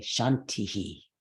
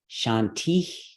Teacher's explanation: you can say Shanti either with that reduplication of the vowel or not